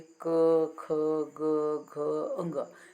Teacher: क, ख, ग, घ, अंग, सब में गले का काम है, कंठ का काम है, इसीलिए हम सब कंठ्याः कहे जाते हैं।